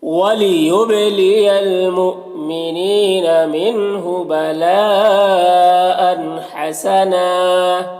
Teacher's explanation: 2 زبر ہے تو وقف کی صورت میں ایک زبر کے ساتھ الف پڑھیں گے